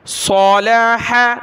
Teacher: صاد جو ہے کلرفل ہے، اس کو ہم نے موٹا پڑھنا ہے، اس کی جگہ ہم نے سین نہیں پڑھنا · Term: صاد کو موٹا